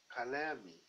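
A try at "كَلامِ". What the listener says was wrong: yes.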